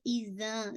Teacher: نون کو لام سے ہٹ کیجیے گا، زی آپ کا یا متیہ ہے، ایزا زا پورا آپ کا ایزا، یعنی اذا نہیں ایزا، زا 2 کاؤنٹ اسٹریچ کریں گے، الف متیہ اور زال ہے زا نہیں